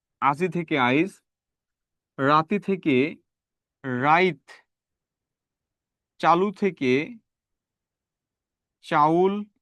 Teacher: পরের ইকার বা রস্যুকার আগে উচ্চারিত হওয়া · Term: অপিনিহিতি